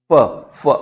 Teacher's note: आ जाता है जीभ है वो दांतों को स्पर्श करती है फ फ में जीभ दांतों के पास जाती है